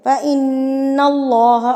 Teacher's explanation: اللہ سے پہلے جب زبر آتی ہے تو اللہ بھی ہیوی پڑھا جاتا ہے، پر پڑھا جاتا ہے، ہونٹ گول ہو جاتے ہیں